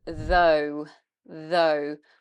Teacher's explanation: So here we have a voiced TH, though, and then we've got a long O sound, like in phone, goat, zone, boat.